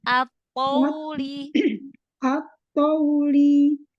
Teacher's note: To-nya jangan monyong. Wawnya yang monyong linnya.